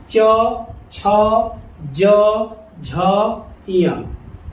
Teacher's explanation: च यानी हमारी जीभ जो है वो तालू से सट रही है।